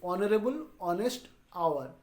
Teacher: We don't pronounce H. We pronounce from O.